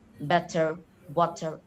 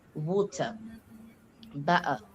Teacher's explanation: in American, they pronounce the R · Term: R sounds